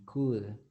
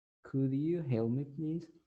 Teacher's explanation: you don't pronounce the L.